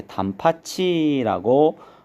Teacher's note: 티읕이 이모음이랑 만나면 치읓으로 이렇게 구개음으로 바뀌죠. 그래서 발음이 이렇게 단파치라고 소리가 난다라는 거 볼 수가 있고요.